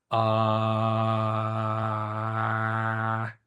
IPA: a